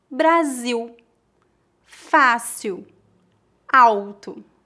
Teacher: Em final de palavras ou diante de consoantes, o L é pronunciado como U.